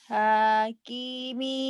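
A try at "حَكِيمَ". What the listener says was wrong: Salah, salah. Salah. Yang panjang tengahnya doang.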